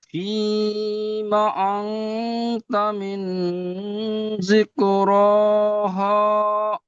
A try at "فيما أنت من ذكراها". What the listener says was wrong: হ নয় হা, হয় আকারে হা। فيما أنت من ذكراها.